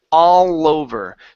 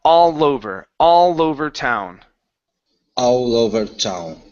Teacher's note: cut the L off, connect it to the word over. So no longer is it over, it's lover.